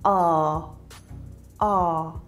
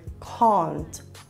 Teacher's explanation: the a vowel sound is usually pronounced with a low voice and quite far back in the mouth so in many South African dialects this would sound like ah